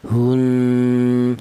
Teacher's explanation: Gunnah itu artinya ada suara berdengung. Adapun panjangnya dengung yaitu 2 harokat atau 2 ketukan.